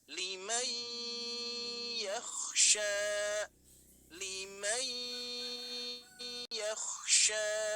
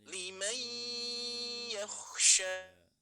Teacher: kita harus melibatkan rongga hidung kita ya, karena ini termasuk tempat atau makhorijul hurufnya di rongga hidung. Maka bacanya bukan limai, limai, limai, mempengaruhi hidung kita ya.